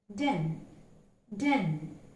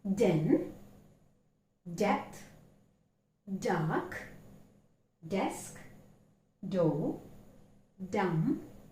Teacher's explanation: Now let's learn how to articulate the phoneme D. D is an alveolar plosive and it is a voiced consonant, and therefore when you utter, there is vibration taking place in the vocal cord